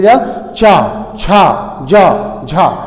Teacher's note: वर्गीय व्यंजन में चा, छा, जा, झा को स्पर्श संघर्षीय वर्ण कहा जाता है या स्पर्श संघर्षीय व्यंजन कहा जाता है, क्योंकि इसके उच्चारण में दोस्तों स्पर्श तो जीवा करती है, लेकिन ये संघर्ष करते हुए निकलते हैं। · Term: स्पर्श संघर्षी वर्ण